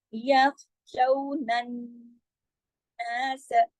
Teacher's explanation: یخ شو، یہ واو لین ہے، شو، اس کو شو نہیں پڑھیں گے، شو. پھر نون کو نون سے جوڑنا بھی ہے اس وجہ سے کہ اس پہ تشدید ہے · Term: اکمل غنہ